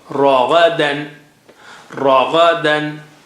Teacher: Ra is thick, Gha is high sounding. Ra, Gha, dan.